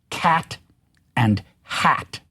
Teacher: the ash sound. This is a midfront vowel and it is the vowel characteristically in the in the American pronunciations of the words cat and hat.